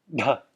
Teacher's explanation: I'm going to contract the diaphragm to give extra aspiration extra air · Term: aspirated version